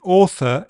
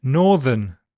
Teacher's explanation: the TH in author is voiceless, but it's voiced in northern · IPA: θ,ð